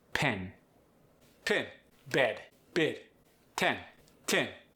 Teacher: The short E becomes the short I.